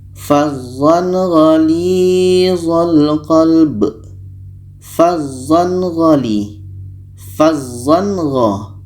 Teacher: Gha adalah huruf izhar halki, maka ketika tanwin bertemu gha, ini hukumnya izhar halki, dibaca jelas. Tanwin jelas, gha jelas, dan tidak ada dengung.